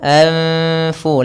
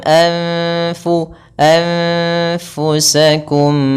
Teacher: Anfu bukan angfu tapi dia anfu langsung kepada makhraj daripada huruf fa yaitu di bibir kita. Posisinya adalah gigi seri atas kita menempelkan dengan bibir bawah. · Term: ikhfa